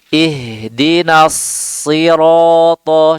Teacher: sempurnakan sifat sofirnya, desisnya, suaranya tajam